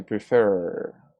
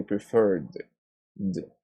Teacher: Number 11, we say prefer. The R sound is a voiced consonant, which means that it vibrates in the vocal cords. So we say preferred, d, a D sound.